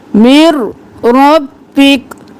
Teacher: मिन रब्बिक नहीं करना, मीम से रो मिर, और फिर रब्बिक, रो मोटा, और काफ साकिन हो जाएगा, हरकत गिर जाएगी क्योंकि वक्त कर रहे हैं। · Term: इदगाम बिला गुन्ना